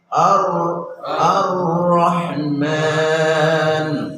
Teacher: রা উচ্চারণ করার সময় লামের মাখরাজের দিকে ঝুঁকবে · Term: ইনহারাফ